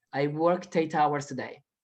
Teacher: Miren cómo pego la T del worked con el 8